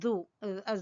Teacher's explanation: زبان کی نوک اور سامنے والے دو دانتوں کے سرے سے ذال ادا ہوگا